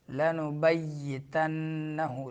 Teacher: یا کو شدت کے ساتھ ادا کرنا ہے